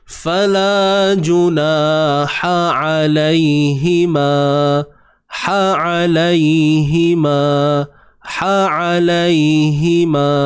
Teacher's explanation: Ha pedas, sempitkan tengah kerongkong tuan-puan, jangan lupa.